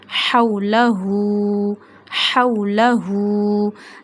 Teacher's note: read this ha from the last part of your throat